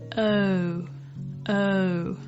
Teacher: as a gliding vowel so the sound goes from o o it's like your mouth closes down as you go through the vowel · So the sound goes from O, O. It's like your mouth closes down as you go through the vowel O. To make this sound, your tongue starts off nice and relaxed with your mouth slightly open in a round shape. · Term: diphthong